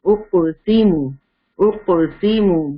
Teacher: قاف کے اوپر سکون ہے، قطب جدن یعنی کہ یہ قلقلہ لیٹر ہے. اسٹار بنا لیجئے، اس کو آپ نے شیک کر کے پڑھنا ہے